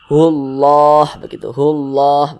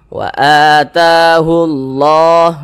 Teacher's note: lam jalalah yang terdapat pada lafaz Allah ini dibaca tebal, dibaca tafkhim. Jadi lafaz Allah ini kita tebalkan, hullah, begitu, hullah, begitu.